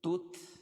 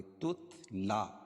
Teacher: تا اور تا کو تا میں ملائیں گے